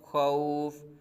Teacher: خوفن، خوفن تو فا متحرک ہے، خوا تنوین ہے تو کیا کریں گے، دو زیر ہے، وقف میں فا کو ساکن کر دیں گے، عارضی سکون ہو گیا، عارضی سکون سے پہلے واو لین ہو رہا ہے، یعنی حرف لین آیا ہے تو حرف لین کی وجہ کے بعد حرف لین کے بعد عارضی سکون پایا جا رہا ہے تو یہاں کیا ہوگا مد لین عارض ہوگا، پہلے حرف مدہ کے بعد آ رہا تھا، اب یہاں حرف لین کے بعد ہے تو یہاں مد لین عارض ہوگا۔